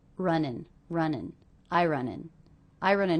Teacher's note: those two words are really linked together because we have an ending consonant and a beginning vowel